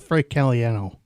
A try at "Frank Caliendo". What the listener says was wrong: You mean Frank Caliendo?